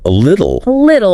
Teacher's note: that T in the middle between vowels, it often softens to sound like a D